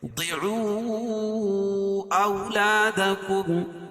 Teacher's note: ضعوا اولادکم، مد منفصل، کیونکہ حروف مدہ کے بعد حمزہ دوسرے کلمے میں تو مد منفصل ہوتا ہے، اس میں توسط اور قصر ہے، یعنی ایک الف سے لے کر 2.5 الف تک اس کو کھینچ کے پڑھیں گے